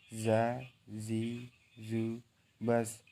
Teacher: Baik, yang ke-11, melafalkan huruf Ja dikeluarkan dengan ujung lisan hampir di atas 2 gigi seri bagian bawah. Diucapkan dengan mengalir suara tanpa diiringi dengan udara.